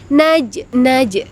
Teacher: ada huruf Jim yang mati atau yang disukunkan jadi harus dipantulkan sedikit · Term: Qalqalah sugro